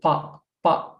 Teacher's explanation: pa without making aspiration from our mouth after the pa